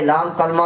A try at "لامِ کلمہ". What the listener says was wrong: کلمہ نہیں ہوندا لام تھلے زیر ہوندی پھر لام کلمہ